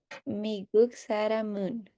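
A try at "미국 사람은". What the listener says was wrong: Excelente.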